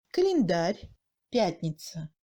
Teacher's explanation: Le A est très réduit et il ressemble à un E muet français.